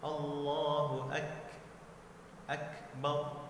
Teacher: Huruf kaf pada saat sukun dia dihembuskan sedikit. Bak ada anginnya seperti ak ya. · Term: mahmus